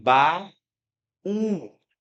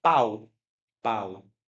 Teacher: eu tenho uma vogal a e uma semivogal um com um sonzinho bem mais fraco.